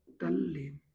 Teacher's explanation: यानी जिसको हम लोग कहते हैं सा सीटी वाला आप लोग बोल सकते हो उससे मेल होता है तो ता और स दोनों बदलते हैं त च में और स छ में बदलता है एक नियम यहां पर और रह गया है कि त का मेल यदि ल से हो त का मेल यदि ल से हो तो त ल बन जाता है